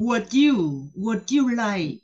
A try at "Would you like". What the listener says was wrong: So, ba cái âm này nó hay đi theo với nhau lắm. Cho nên người bản xứ sẽ phát âm rất là nhanh nha. Would you like? Đừng có would you like, nó là nè, would you like, lên giọng would you like.